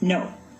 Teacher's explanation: in spanish or japanese the word no is to our ear clipped or abbreviated